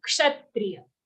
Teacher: Not cha. There's no cha sound there. It's sha. Ka and sha.